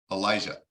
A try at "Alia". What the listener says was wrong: Jay is silent, but Elijah is my English version of Alia.